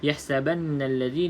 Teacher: Okay, wala yahsabanna allazi, macam biasa ha pedas, kena bunyikan pedas dia, iaitu caranya senyumkan mulut